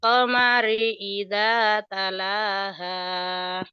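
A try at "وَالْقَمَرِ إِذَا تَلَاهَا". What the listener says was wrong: Wal qamari idza talaha. Ha jangan ha. Masih ada ha sedikit deh.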